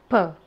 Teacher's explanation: bilabial sound, made by joining the lips together as pronounced p.